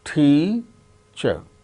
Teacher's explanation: So, there are two syllables. Out of these two syllables, the first syllable is stressed. That gains importance, more importance than the other syllable.